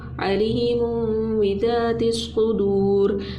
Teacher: دو پیش کی جو تنوین ہے نا، تنوین کی آواز کو میم میں بدلنا ہے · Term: اقلاب